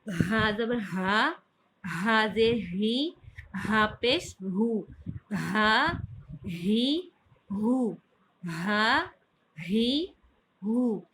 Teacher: ہاں اکثر حلق کے آخری حصے سے جو سینے کی طرف ہوتا ہے وہاں سے اس کی ادائیگی ہوتی ہے. اور صاف گلے کے ساتھ اس کو واضح کر کے پڑھیے گا.